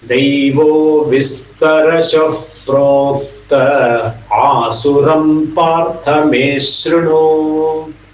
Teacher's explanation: In the verse you will not find proktaha because there is an asuraha. So therefore the visarga goes. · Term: visarga lopa